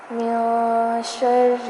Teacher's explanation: نون ساکن پر اخفا کیا جائے گا، یعنی نون کی آواز کو ناک میں چھپا دیں گے